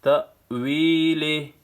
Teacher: یا مدہ ہے، ایک الف کی مقدار کھینچنا ہے